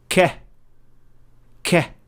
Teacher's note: The difference with qaf is that it is a little bit deeper into the mouth, as it is only touching the soft palate, and the sound is produced at that point. But for the kaf, the sound is produced when the deepest part of the tongue is touching the area between the soft palate and the hard palate. So it is a little bit behind the pronunciation point of qaf, closer to the opening of the mouth.